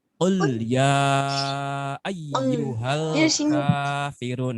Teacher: Tapi qul diambil dari tenggorokan.